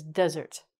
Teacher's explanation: The accent is on the first part of the word and it's two syllables